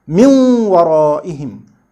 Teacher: we still make some part of noon visible by assimilating it into waw with nasalization or gunnah